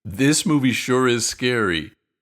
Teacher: Listen to the intonation. You stress the word sure and the adjective.